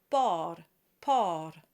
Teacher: the r is just rolled lightly with just a flip